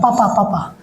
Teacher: जब पापा पापा कहोगे तो देखना एक ओठ से ही उच्चारण होता है। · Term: ओष्ठ